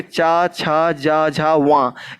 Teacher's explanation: चा वर्ग जो होता है ये तालु से बोला जाता है।